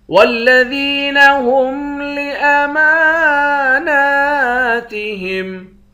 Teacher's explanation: میم اور نون دونوں پر کھڑے زبر ہے، دونوں کو ایک ایک الف کے مقدار کھینچ کر پڑھیں گے۔